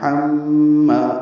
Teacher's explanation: حما میں ہا وسط حلق سے ادا ہوگا، میم مشدد ہے، غنہ ہوگا، ہا کو میم سے ملانا ہے · حما، آواز ناک کے ماں سے ملے جائیں گے۔ ما الف مدہ ہے، 2 حرکات لمبا ہے